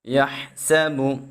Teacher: ہا کو خوب باریک پڑھیں گے اور سین میں سیٹی پیدا کریں گے